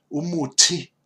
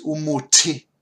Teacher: the T does have the H afterwards, which means that it is an explosive sound. And the best way, put your hand in front of your mouth, and you should feel the air when you pronounce an H after the consonant.